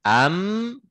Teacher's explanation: bibir kita tertutup tidak ada akses suara lebih sudah tapi keluar lewat hidung